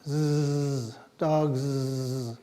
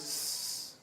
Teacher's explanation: But when you say cats, the pluralizing sound is s, like that. No vocalizing, no vibration of the vocal cords.